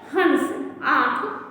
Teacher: इसका उच्चारण अनुस्वार की अपेक्षा हल्का होता है। इसका उच्चारण करते समय नाक और मुंह दोनों से हवा निकलती है। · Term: अनुनासिक